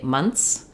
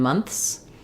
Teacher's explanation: it is okay and correct to say months with n, th, and s, but a lot of native speakers will simply say months with just the s sound